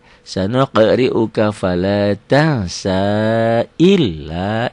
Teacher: L-nya double aja tanpa ditahan, tanpa dengung